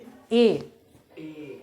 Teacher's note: देखिए अंदर से आ रहा है ए, और तालु में भी थोड़ा सा स्पर्श कर रहा है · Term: कंठ तालु